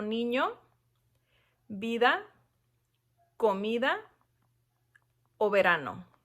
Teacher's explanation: estas palabras no llevan acento ya que terminan en vocal pero siguen siendo palabras llanas porque su sílaba tónica es la penúltima